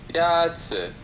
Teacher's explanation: The first tone is a high, level tone.